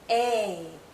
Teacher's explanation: This is a long vowel sound. A. Our mouth is opening more. Our jaw is lowering. A. This sound is also tense.